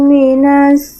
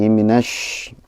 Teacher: Cuman shinnya itu masih kayak sin ya, masih ke sin.